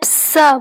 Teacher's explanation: हम जब स बोलते हैं, स बोलने में हमारी जीवा और तालु में से रगड़ होती है और धीरे धीरे रोक कर बोला जाता है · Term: ऊष्म व्यंजन